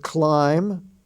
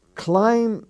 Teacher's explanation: the word climb the B is not sounded